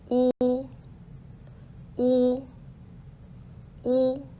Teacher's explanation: o is a rounded high back vowel pucker and protrude your lips a little bit when producing the sound